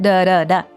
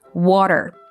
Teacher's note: When it's between two vowel sounds, Americans tend to make it into a fast duh sound, like duh duh duh. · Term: American T